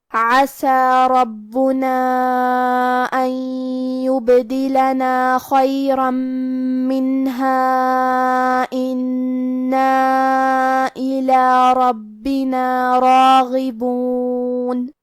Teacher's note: کلمت عسى میں حرف العین کی ادائیگی حلق کے درمیان والے حصے سے ہے. کلمت ربنا میں را پہ زبر ہے تو ہمیں را کو موٹی آواز میں پڑھنا ہے اور با پہ تشدید ہے، لہذا ہم تشدید کو ظاہر کریں گے اور 2 حرف کے برابر با کو پڑھیں گے.